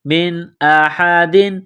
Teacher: نون ساکن کے بعد حمزہ ہے، حروف حلقی ہے تو نون ساکن پر غنہ نہیں کریں گے